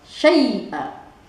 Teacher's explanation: Jadi huruf ya mati dibacanya I bukannya E.